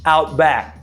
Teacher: Sometimes the k at the end of the word back is not even pronounced.